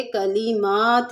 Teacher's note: کلمات میں میم کے اوپر کھڑا زبر ہے، تھوڑا سا کھینچ کے پڑھیں گے